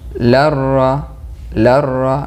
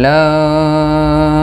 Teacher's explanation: Nun bertemu dengan ra. Ini idgham bila gunnah, tidak berdengung. Larra, larra langsung.